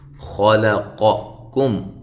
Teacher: یہ کاف باریک ہے، میم ساکن کا اظہار ہے